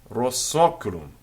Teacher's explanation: there would be an elision, a sliding together of the two words, because the vowel essentially is being followed by another vowel, but the first vowel is nasalized